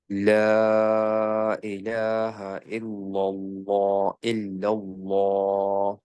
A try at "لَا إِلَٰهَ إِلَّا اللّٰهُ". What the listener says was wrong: এইটা একটু চলে আসছে, হেভি হয়ে গেছে। ইল্লা খেয়াল করো একটু স্মাইলি এইখানে। ডিফিকাল্ট।